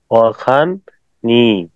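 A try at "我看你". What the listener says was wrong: Right, ওয়াখান নি।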